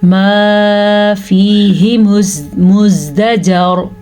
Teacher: साकिन रॉ से पहले ज़बर आ गई है तो रॉ पुर पड़ी जाएगी